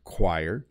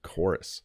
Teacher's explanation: choir uses the qu sound choir and chorus uses the hard k sound chorus